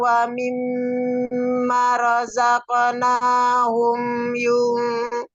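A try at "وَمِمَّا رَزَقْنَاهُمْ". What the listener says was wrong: Nah ya, wa mimma, manya panjang ya karena ada mat di situ.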